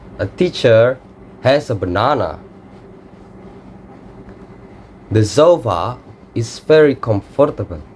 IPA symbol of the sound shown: ə